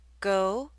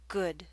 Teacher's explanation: Your mouth should be more tense and your lips should be more rounded for the O